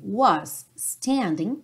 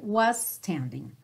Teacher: não precisa se preocupar em falar dois s diferentes vai direto